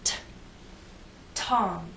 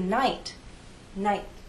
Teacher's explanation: air there the tip of my tongue touches that hard bump there is a release of air but the puff is very weak